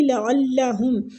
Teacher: لعلہم عین وسط الحلق سے